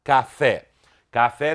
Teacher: haverá uma sílaba tônica o que é mais forte fé e uma sílaba à tona que é mais fraca cá